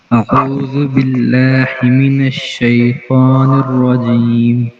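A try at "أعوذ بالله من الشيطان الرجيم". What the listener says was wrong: آئین نہیں سیکھ رہا، آئین آئین ابھی صحیح نہیں ہوا آپ کا.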